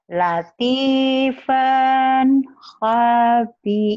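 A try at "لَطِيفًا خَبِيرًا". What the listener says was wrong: Kenapa panjang latifannya? Kan idhar. Tapi jangan buru-buru. Latifan khabiran.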